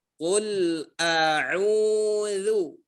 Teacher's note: makhraj daripada huruf ain di sini makhrajnya ialah tengah tenggorokan. Sedangkan hamzah adalah pangkal tenggorokan.